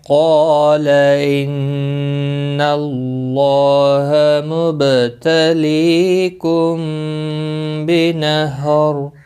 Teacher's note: میم ساکن کے بعد متحرک با آیا ہے، یہاں پر اخفاء شفوی ہوگا، غنہ کے ساتھ پڑھیں گے · نون مشدد پر غنہ ہوگا ، اللہ کا لام زبر کی وجہ سے پر پڑھا جائے